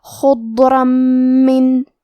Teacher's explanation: آخری میں حرف الرا پہ تنوین زبر ہے، پھر حرف المیم ہے کلمت من، میم حروف الادغام بغنہ میں سے ہے تو ہم یہ تنوین کو میم میں ملا کے غنہ اور تشدید کے ساتھ یہ حکم کو ادا کریں گے